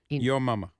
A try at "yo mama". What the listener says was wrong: Your mama. Yo mama. Not your mama. You couldn't do your mama gags, jokes. You know, it was yo mama, like yogurt.